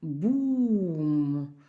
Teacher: вимовляється як довгий звук у складаючи губи в трубочку і вимовляючи протяжно у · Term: довге у